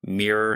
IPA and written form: miɹor (mirror)